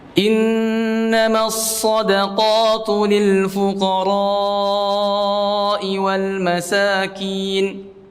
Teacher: Memanjangkan huruf ra-nya karena mad wajib muttasil